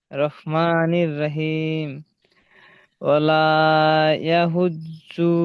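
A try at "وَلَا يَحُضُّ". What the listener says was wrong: জু টান দিচ্ছেন কেন? পেশ আছে না, হারাকাত, হারাকাতের পড়া তাড়াতাড়ি পড়তে হয়, টান দেওয়া নিষেধ। জু টান হয়ে গেল, ওয়ালা ইয়াহুজ্জু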